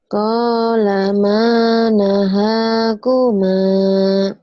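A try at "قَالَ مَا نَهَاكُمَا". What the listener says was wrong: Maaf, jangan diteruskan dulu bila masih keliru panjang pendeknya.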